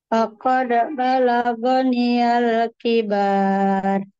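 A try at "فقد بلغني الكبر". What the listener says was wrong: Nah, hati-hati baknya panjang tidak, Bu.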